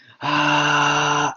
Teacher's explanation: Porque la voz que hice de voz soplada fue ¡ah! Así, una voz soplada forzada. Por eso igual tiene buena energía.